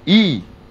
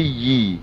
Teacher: Kalau baris bawah, kepala ya yang bunyi yi, ya. Bukan i, tapi yi.